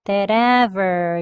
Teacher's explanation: that ever 연음할 건데요. 여기 트소리 flap t로 합니다. that ever 이렇게 연음되는데 끝소리 ver 할 때 혓불이 당기지 않고 편하게 발음했어요.